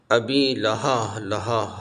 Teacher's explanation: ہا سینے سے آواز نکلے گی، تھوڑا سا جھٹکا ہوگا۔ لہبیوں نا، وتب یہ با حروف قلقلہ میں سے ہے، ہلا کے پڑھا جاتا ہے۔